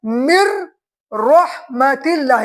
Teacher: اس لیے کہ قاعدہ یرملون والے حرف میں سے پہلے نون ساکن آ گیا، تو صورت میں نون ساکن کو نہیں پڑھیں گے بلکہ یرملون والے حرف کو تشدید دیں گے، تشدید کے پڑھیں گے، تو ہو گیا مر رحمت اللہ۔